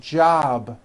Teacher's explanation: job ends in a B which is a voiced sound job it's not jump with an unvoiced p keep the voicing